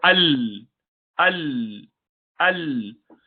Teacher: the makhraj remains closed when you pronounce sakin lam. The sound actually continues from the sides, as you could see in the picture.